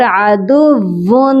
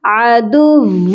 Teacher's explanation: ہم تنوین کی آواز کو اور نون ساکن کی آواز کو میم میں بدل دیتے ہیں۔ اسی لیے ہم نے یہاں پر عدوون، ایسے ون نون کی آواز نہیں بلکہ ہم نے میم کی آواز کو شامل کرنا ہے۔ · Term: اقلاب کا قاعدہ